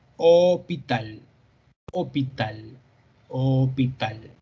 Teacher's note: es una o con los labios más alargados pero hacia arriba como quien dice hospital hospital hospital entonces alargamos esas vocales fonéticamente